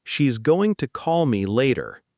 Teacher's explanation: >> Notice how going to often becomes going to in relaxed, natural speech, and later gets the strongest stress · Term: rhythm